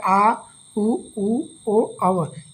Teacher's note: जीहवा के पीछे भाग से उच्चारण होता है